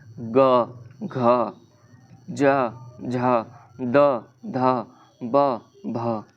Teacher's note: जिन ध्वनि के उच्चारण में स्वर तंत्रियां कंपन होती हैं ठीक वहां पे और ये कौन-कौन सा वर्ड है हर एक वर्ग का तीसरा और चौथा वर्ण है उदाहरण ग घ झ द ध ब भ ठीक यह हमारे तंत्रिया में कंपन उत्पन्न होती है इसे हम कहते हैं घोष ध्वनि कहते हैं।